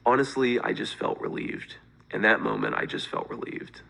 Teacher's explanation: there is so much more vocal fry in his voice.